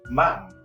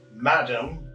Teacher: Madam becomes ma'am. D sound, that is a consonant sound, that is dropped.